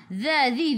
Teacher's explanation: hujung lidah keluar pada gigi depan. Zi 2 harakat ada ya mad asli.